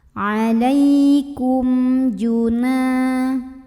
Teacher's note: Alaikum, ada idhar syafawi karena ada mim sukun yang menghadapi huruf jim maka mim sukunnya dibaca jelas bunyi dan tidak ditahan.